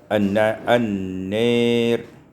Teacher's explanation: imalatu fathatin nuni wal alif, diimalahkan fathah nun dan alif sehingga kita baca an-nir.